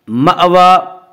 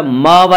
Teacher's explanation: مأوى یہاں جھٹکے سے پڑھا جائے گا، ماوا نہیں پڑھیں گے.